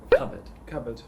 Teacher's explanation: you don't really pronounce the R in the last part.